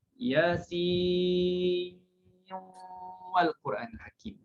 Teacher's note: Ada ejaan sin. Bila kita nak sambung dengan wal Quranil Hakim, kita buat idgham.